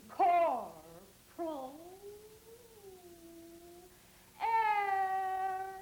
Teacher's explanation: a little longer on the vowel before you touch the R on the word air. The R should be the last thing that you grab onto.